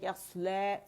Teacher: اگر سٹاپ کر رہی ہوں تو مد اصلی بن رہا ہے یسلا، 2 کاؤنٹ کے لیے میں نے اس کی آواز کھینچی ہے، مقصورہ ہے، لام کی آواز کو کھینچ رہی ہے، ٹھیک ہے.